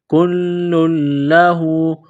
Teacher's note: لام کے اوپر تشدید ہے تو لام کو دبانا ہے، سختی کرنی ہے